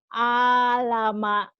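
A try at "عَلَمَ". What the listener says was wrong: Ainnya belum keluar tuh. Kalau alama nggak jadi alama.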